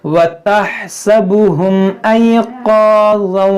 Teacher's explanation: व तहसबुहुम, यहाँ देखें ये हा है, तहसबुहुम, यहाँ मीम साकिन के बाद हमजा है, तो यहाँ पर इज़हार शफवी होगा